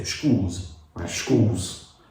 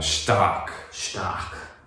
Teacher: S has become a sh before a consonant.